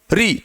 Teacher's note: मूर्धा में एकमात्र कौन सा है, री, तो री मूर्धन्य स्वर है।